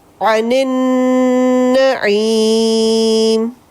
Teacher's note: عن النعیم، پھر سے ادغام بالغنہ کے قاعدے پہ، نون مشدد ہے اس پہ غنہ ہوگا